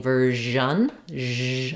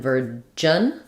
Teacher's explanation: And just this one continues. So if I'm saying version, zh, I want that same sound, continuing sound like in measure. And virgin, this one pushes out and doesn't continue.